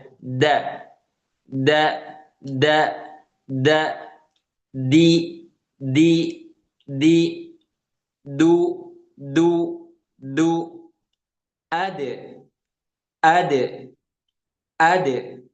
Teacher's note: Da ini sama halnya seperti to. Dia sifat yang kuat dan nggak ada hamesnya, ya. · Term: huruf dal